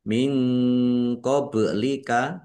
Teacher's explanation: nun sukun bertemu dengan huruf qof bacaan ikhfa dibaca samar-samar · ba sukun bacaan qalqalah dibaca memantul ditampakkan pantulannya